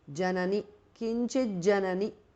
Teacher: the tu changes to j because of sandhi